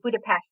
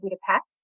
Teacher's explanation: in Hungarian, the S sound is a sh sound